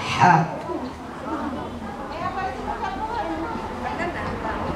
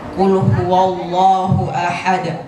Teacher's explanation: Sedangkan qul huwallahu ahad itu ha tipis. Ha bagian tenggorokan bagian tengah